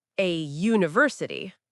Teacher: Even though university starts with a U, it starts with a Y sound, which is a consonant sound. So we use A there.